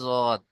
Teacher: জীবের কিনারা তার বরাবর উপরের মাড়ির দাঁতের গোড়া